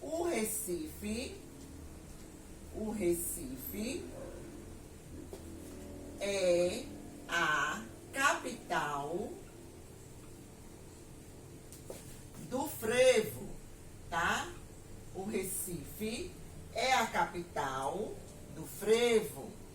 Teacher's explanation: Recife eu escrevo com E, porém tem som de I.